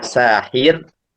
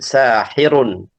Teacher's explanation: Jadi kalau kita waqaf sahir maka dibaca tipis sakinatun qoblaha maksur karena r-nya kita sukunkan dan sebelumnya kasrah. Adapun kalau kita baca lanjut sahirun ya, maka tafkhim karena rnya berharakat dommah.